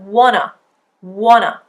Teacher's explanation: you can see the schwa being used quite clearly there at the end